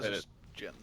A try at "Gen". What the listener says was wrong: it's Gen, not Jen. Gen Great Name, not Gen